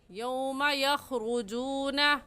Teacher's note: موٹا کرنے کا طریقہ کہ آپ کے دونوں ہونٹ گول ہو جائے